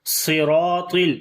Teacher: صاد را الف طا, تو چاروں حروف کو ہم نے موٹا پڑھنا ہے